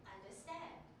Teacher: So you see the stress on the third syllable.